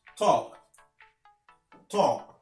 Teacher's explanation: Tu ne prononces pas le L.